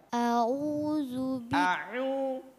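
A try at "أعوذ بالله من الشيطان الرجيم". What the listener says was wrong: Kalau itu nanya khaysum ya, masuk di hidung, jangan masuk ke hidungnya. Jangan kasih masuk kasih keluar hidung, jangan, kasih keluarnya lewat mulut.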